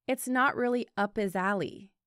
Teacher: His sounds like is when it's preceded by a consonant. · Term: reductions